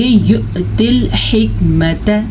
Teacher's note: تا زیر لام تل, یا سائلنٹ ہے کیونکہ یا کے اوپر کوئی بھی حرکت نہیں ہے